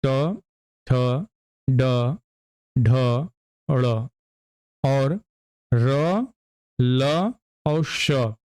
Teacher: ट ठ ड ढ ड़ और र ल और श यह भी मुर्धा से उच्चारित होंगे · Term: मुर्धन्य